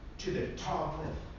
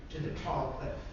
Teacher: Unstressed, unstressed, stressed, stressed. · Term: two stresses in a row